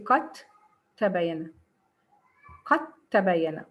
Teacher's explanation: You see, get the t instead of the dal. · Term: إدغام متجانس